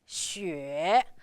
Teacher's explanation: the third tone going down and then up